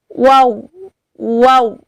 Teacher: Huruf waw ketika dibaca baru bertemu antara bibir atas dengan bibir bawah. Itu bentuknya membulat atau memonjongkan ke depan, yaitu waw. Waw. Setelah dimonyongkan, dibuka lagi bibirnya.